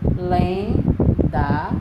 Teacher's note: Então, você viu a palavra lenda destacada, separou em sílabas, lenda, 2 sílabas, e a sílaba tônica é lem.